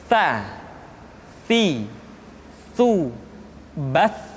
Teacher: ujung lidah disentuhkan dengan dinding dua gigi seri bagian atas.